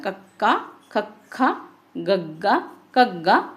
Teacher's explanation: ਜੀਭ ਕਦੇ ਕੋਮਲ ਤਾਲੂ ਨੂੰ ਛੂੰਦੀ ਹੈ। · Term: ਕੰਠੀ